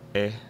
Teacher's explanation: some kind of relatively high, relatively front vowel that's unrounded but a lot laxer than mine in a lot of cases. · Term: kit vowel